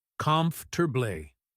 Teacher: That middle part just melts together and the stress hits that first syllable hard.